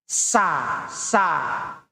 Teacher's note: Sin kalau kita ucapkan sin itu lidahnya datar sa lidahnya dari dalam ke ujung datar.